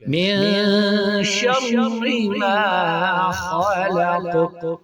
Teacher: پر یہاں پہ ہم جب وقف کریں گے تو اس کو قاف کو ساکن کریں گے اور اس پر قلقلہ بھی کریں گے